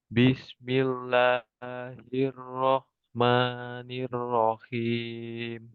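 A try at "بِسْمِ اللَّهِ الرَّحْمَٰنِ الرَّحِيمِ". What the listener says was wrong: nah, panjangnya 2 harokat saja. Bismillahirrahmanirrahim.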